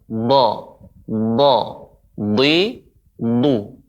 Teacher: Do yang ditebalkan bagian dalamnya. Huruf do juga ini di antara huruf isti'la, artinya naiknya suara tebal.